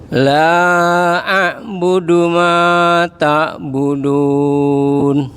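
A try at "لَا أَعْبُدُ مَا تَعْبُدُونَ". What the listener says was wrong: Baik, ma-nya Pak, kepanjangan dikit. Enggak ngerubah arti Pak, cuman coba dipendekin dikit. Ma ta'budun.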